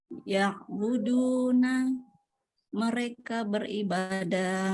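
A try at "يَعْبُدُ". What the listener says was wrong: Maaf Bu, untuk yang pertama bacanya enggak boleh panjang, enggak boleh ya budu, enggak boleh gitu. Tapi pendek.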